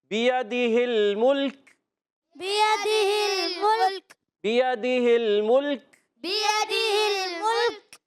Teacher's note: یا مدہ یہ یاد رکھیں یہ ادا ہوتا ہے منہ کے خالی حصے سے، یعنی جوف دہن سے. منہ کا خالی حصہ ہوتا ہے اس سے یہ حرف مدہ ادا ہوتے ہیں.